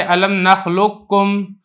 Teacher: یہ اسی طریقے سے علم نخلقکم یہاں پہ قاف کا کاف میں ادغام کیا ہے لیکن یہ والی کاف کچھ نہ کچھ پڑھی جا رہی ہے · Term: ادغام ناقص